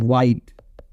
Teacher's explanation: lower lip and back of the tongue as well as upper lip ये तीनों मिलके आपके एक्टिव आर्टिकुलेट र है एंड ये जो